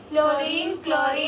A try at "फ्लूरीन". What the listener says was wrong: देखिए एक चीज गलत आप पढ़ रहे हैं, इसको फ्लोरीन है, फ्लूरीन पढ़ना है, ठीक है। हाँ, बर्ड फ्लू, फ्लू बोलते हैं ना, तब फ्लूरो बोलना है आपको।